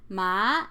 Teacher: Ma, a rising tone, is hemp.